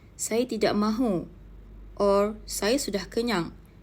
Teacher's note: a clear, falling tone in responses like saya tidak mahu or saya sudah kenyang shows the end of the statement or a firm decision.